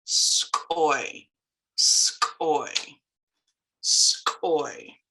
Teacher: you've got that hard K raised W, and you're blowing out